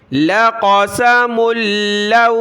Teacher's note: لَقَسَ ملو، میم کو لام کے ساتھ ملا ہے، لام کو واو کے ساتھ، لام کے اوپر تشدید ہے تو اس کو جما کر سختی کے ساتھ پڑھنا ہے۔